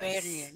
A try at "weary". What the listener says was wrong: No, not where. weary.